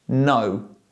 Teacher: when I usually pronounce an N, for example in the word no, the front part of my tongue touches the top of my mouth, no. But when I use this symbol in words such as sing, The back part of my tongue touches the top of my mouth and I say sing, sing.